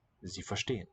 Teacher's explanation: A single letter S in the onset of a syllable is going to be Z, voiced in German.